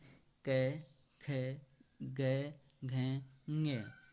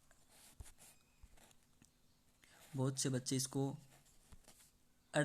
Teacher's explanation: जो ये आपको दिख रहा है ङ, मतलब नाक से बोला जाता है, और इसमें आधा मतलब थोड़ा सा ग की ध्वनि निकलती है